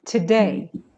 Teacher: Put the stress on the second syllable.